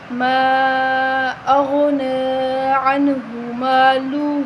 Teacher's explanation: عنہ مالہ، عنہ نہیں کریں گے بلکہ عنہ مالہ اس طرح پڑھیں گے۔ ہا الٹا پیش ہو جو ہے اس کو ہم 1 الف کے برابر لمبا کریں گے